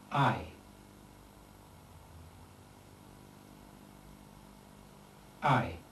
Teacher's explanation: one can treat it as composed rather more complexly of the vowels short a and long i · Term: diphthong